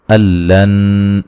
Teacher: یہاں نون ساکن کا ادغام ہے لیکن بلا غنہ ہے